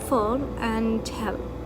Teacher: the dark La, which comes after vowels like in full and hell